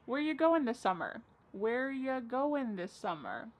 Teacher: Where ya, which is you, goin', dropping the G.